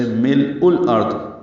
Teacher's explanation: یہاں پہ لام ساکن ہے اور اس پہ اظہار ہے لام ساکن پہ، یعنی قلقلہ نہ ہو ، حمزہ کو لام سے ملانا ہے، یہ الارض کا حمزہ